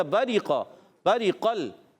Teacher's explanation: بریقل میں با پر زبر ہے، را کے نیچے زیر ہے، را باریک ہو جائے گا، اور قاف کو لام سے ملانا ہے، لام کو ہلانا نہیں. · قاف کا مخرج زبان کی جڑ، تالو کا نرم حصہ، یہ قاف کا مخرج ہے، یاد رکھنا ہے.